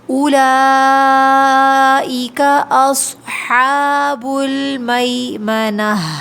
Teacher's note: اس پہ مد ہے، اولا کے اوپر، اس کو کھینچیں گے 4 کاؤنٹس